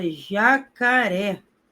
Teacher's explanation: Se eu tenho a palavra jacaré, sílaba tônica é a última. Oxítona terminou em e acentuei.